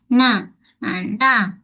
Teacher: Nun yang berbaris juga mempunyai sifat unah. Sifat gunah yang angkas sikit sangat.